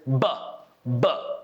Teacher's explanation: And I'm blocking the air inside, but I'm closing my lips together very hard and firm. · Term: B consonant